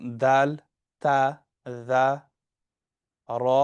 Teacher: So for Shamsi letters, the tip or the blade of the tongue is involved.